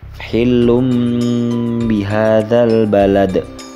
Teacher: Dhammah tanwin yang terdapat pada huruf lam bertemu dengan huruf ba, sehingganya dhammah tanwin menjadi mim mati.